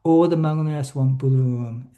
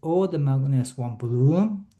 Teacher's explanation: At the same time, it is reported that sentence-ending intonation contour disambiguate interpretations, namely, falling intonation corresponds to all not, while fall rise intonation corresponds to not all interpretations. So I guess the relevant reading, all the magnolias won't bloom, sentence ending goes down.